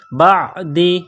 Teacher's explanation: یردونکم من بعد، با کو عین کے ساتھ پلس کرنا ہے، عین جو گلے سے نکلتی ہے زور لگا کر عین کو نکالا جاتا ہے